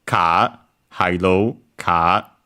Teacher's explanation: Japanese don't have the uh R the uh R sounds at the end of syllables and so uh they usually become a longer vowel kind of similar to uh received pronunciation in British English.